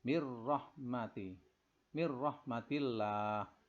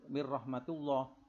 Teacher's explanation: Nun mati bertemu dengan ra, idgham bila gunnah. Ra-nya ini dibaca tipis karena sebelumnya ada mir al-kasrah ini. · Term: tarkik